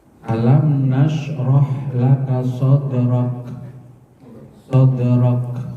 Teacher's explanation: Huruf kafnya karena akhir ayat dibaca sukun mati. Ketika huruf kaf mati itu, itu ada suara yang mengalir, ada semacam letupan tapi bukan qalqalah.